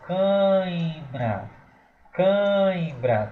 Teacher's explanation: Um fenômeno de cair o som nasal. Então vai ser um ditongo nasal decrescente.